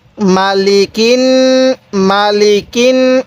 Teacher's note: কাফ লাগবে এবার এই নুনের সাথে তাহলে কাফ নুন জের কিন আমরা এই নুনের মধ্যে গুন্নাহ করব কারণ মিমে নুনের তাজদিদ হলে গুন্নাহ করা ওয়াজিব হয় তো নুনের উপর তাজদিদ আছে এজন্য আমরা এখানে গুন্নাহ করব তাহলে